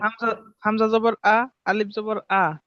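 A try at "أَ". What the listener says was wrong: এটা আলিফ জবর কেন হবে ভাই? আলিফের উপরে জবর জের পেশ থাকলে ওই আলিফে কি বলে? হ্যাঁ, এই যে একটু আগে তো বলে আসলাম।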